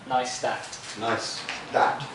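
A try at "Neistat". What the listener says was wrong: No, there's no sh.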